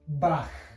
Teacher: This combination of letters here makes the h sound back in the throat.